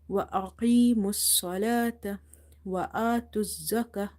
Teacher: So in both situations, in the word wa aqimus salata, when you say qi and when you say sa, you have to make these letters heavy. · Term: heavy letters